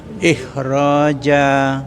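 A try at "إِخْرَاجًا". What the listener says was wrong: Agak dipanjangin Bapak. Ikhraja. Rohnya panjang. Ikhraja.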